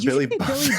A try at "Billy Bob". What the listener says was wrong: You just said Billy Bog. Billy Bog.